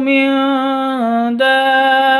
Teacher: nun mati bertemu dengan dal. Cara bacanya samar didengungkan atau samar disertai dengung.